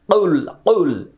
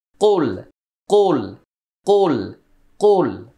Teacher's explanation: অনেকে এরকম উচ্চারণ করে কুল কুল, এটা ভুল। কুল ভুল, কফটা মোটা হবে কিন্তু হলকে যাবে না, গলার ভিতরে যাবে না।